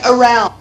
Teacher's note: really put the emphasis on the second syllable. You barely hear the first syllable. The first syllable is schwa.